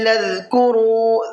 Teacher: ذال کو سافٹ کر کے پڑھنا ہے، را کو پر کر کے پڑھنا ہے